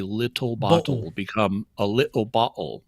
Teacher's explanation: they have these really pronounced glottal stops · Cockney English is they have very pronounced glottal stops in with medial T's